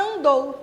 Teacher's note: esse A, junto com essa letra N, produz apenas o som do A nasalizado